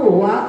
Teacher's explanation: जब हम वा का उच्चारण करते हैं तो ओष्ठ थोड़े से आगे आते हैं